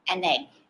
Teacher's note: and a so an ends with the consonant n and egg begins with the vowel e when we say this we actually link it together